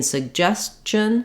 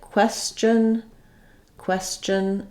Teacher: in suggestion suggest that letter T becomes part of the uh the CH sound at the end